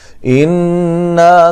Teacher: نون مشدد پہ غنہ ضروری ہے